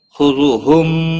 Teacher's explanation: میم ساکن کے بعد واو آیا ہے، یہاں پر اظہار ہوگا، اس اظہار کو اظہار شفوی کہتے ہیں، میم کو ظاہر کر کے پڑھنا ہے۔